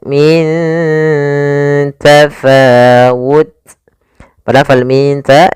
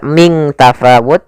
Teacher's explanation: Kemudian min tafawal min ta di sini ada bacaan ikhfa yaitu adanya nun sukun bertemu dengan huruf ta. Cara membacanya nunnya disamarkan ke huruf ta.